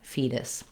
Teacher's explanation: I lift up to that T and D position, my voice is on, and I just tap up and tap back down, fetus. That flap or tap is how other languages sometimes do an R sound in the middle of the word.